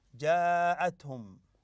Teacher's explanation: هنا مد متصل لان الهمزه والمد في كلمه واحده